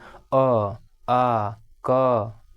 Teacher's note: जैसे देखिए हम बोल रहे हैं, देखिए जैसे कंठ से बोल रहे हैं, जैसे अ तो क्या है देखिए ना जीभ सटा ना ओठ सटा, अंदर से आवाज़ आ रहा है कंठ से